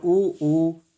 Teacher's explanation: ओष्ठ, ऊ और बड़ू, तो जब इसको बोले ऊ तो ये क्या आ रहे हैं, दोनों होंठ जो हैं वो पास आ रहे हैं। जब हम ऊ और ऊ बोलते हैं तो दोनों होंठ जो हैं वो स्पर्श होने को होते हैं, पास में आते हैं